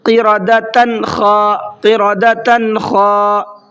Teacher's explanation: نون کی آواز کو ظاہر کر کے پڑھیں گے، غنہ یا اخفا کچھ بھی نہیں کرنا ہے وہاں پر۔ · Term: اظہار